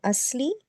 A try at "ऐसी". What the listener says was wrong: नहीं, असली नहीं है, अलिफ और ये है।